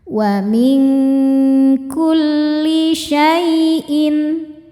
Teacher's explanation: Cara bacanya nun sukun disamarkan menuju makhraj kaf disertai dengung. Dengungnya besar karena kaf ini makhrajnya jauh dari nun. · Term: ikhfa hakiki, ikhfa hakiki ab'ad